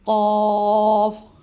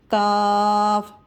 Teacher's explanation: قاف، قاف کچھ لوگ قاف اور کاف کو ایک جیسا کر دیتے ہیں، یہ موٹا حرف ہے اور زبان کی جڑ قوے سے ٹکرائے گی تو قاف کی ادائیگی ہوگی